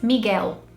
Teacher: the L sound turns into more of a U sound and it doesn't linger